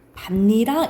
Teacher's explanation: 앞에 받침이 있고 뒤에 이가 오면 어떤 현상이 일어나냐면 니은이 첨가가 돼요. 그래서 니랑이가 돼. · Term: 니은 첨가